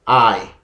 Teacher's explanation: So I is a long vowel. It's a diphthong. I. A and A together.